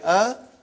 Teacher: alif has no speech sound when you say ah it is the sound of hamza